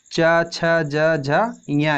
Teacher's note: ये हमारे किससे बोले जाते हैं, तालु से बोले जाते हैं।